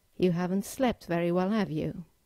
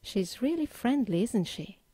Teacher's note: the second usage of a question tag is to reinforce a statement you have made and get agreement from your listener. In this case, you need to use a falling intonation